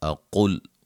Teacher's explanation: قاف کو موٹا، ٹھیک ہے، یہ دھیان سے پڑھیں تاکہ قاف کے ساتھ یہ لام موٹا نہ ہو